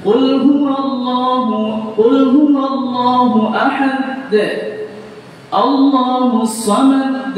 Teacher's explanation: dia tasydidkan dal yang di ujung padahal tidak ada tasydidnya sama sekali. Kalau ditasdidkan maknanya ada dua huruf. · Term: menambah huruf